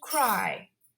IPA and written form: kraɪ (cry)